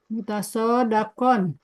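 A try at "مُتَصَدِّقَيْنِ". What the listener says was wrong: Mutasodikon, bukan dakon.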